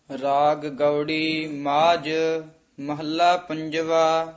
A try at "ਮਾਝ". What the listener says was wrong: ਮਾਝ ਜੱਜਾ ਨਹੀਂ ਕਹਿਣਾ, ਝੱਜਾ ਉਚਾਰਨ ਕਰਨਾ ਹੈ।